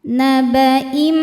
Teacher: tanwin dimasukkan ke mim kemudian tahan dengungkan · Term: idgham bighunah